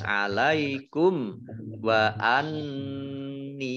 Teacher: Idhar safawi dibaca jelas alaikum wa anni. Nun tasdid dibaca gunnah atau mendengung ditahan 2 harokat